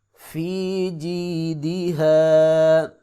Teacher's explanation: دال کو لمبا نہیں کریں گے، اکثر لوگ لمبا کرتے ہیں، جی دی ہا، یہ غلط ہے۔